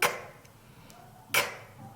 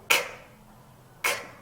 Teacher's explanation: 성대가 크 울리지 않고요. 세는 소리고요.